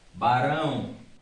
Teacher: Você vai observar que quem sobressai é a letra A. Portanto, o O funciona como semivogal.